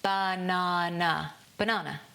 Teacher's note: In my version, two of the vowel sounds almost disappear completely. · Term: schwa